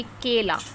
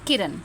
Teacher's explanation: अब यहां पे देखिए केला। केला में हम ज्यादा खींच रहे हैं पर किरण में हम ज्यादा नहीं खींच रहे हैं। केला और किरण।